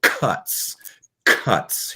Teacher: cuts is a soft palate sound